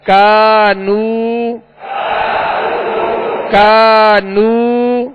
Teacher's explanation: یہاں الف مدہ بھی ہے اور واو مدہ بھی ہے، دونوں کو ایک ہی مقدار میں یعنی ایک الف کی مقدار کھینچ کر ادا کریں گے · یہ ڈنڈی والا کاف ہے، اس کو باریک پڑھنا ہے اور الف مدہ ہے، ایک الف کی مقدار میں کھینچیں گے. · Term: حروف مدہ